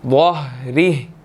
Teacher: ज़हरी, वाह है, इसको मोटा अदा करेंगे, ठीक है। और इसी तरह हा के नीचे जो खड़ी ज़ेर है वो साइलेंट हो जाएगी क्योंकि आयत मुकम्मल हो रही है